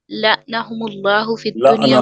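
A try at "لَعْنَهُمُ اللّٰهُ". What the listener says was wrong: لعنہم اللہ نہیں ہے، لعنا ہے. لعنا عین پر زبر الگ ہو نون سے.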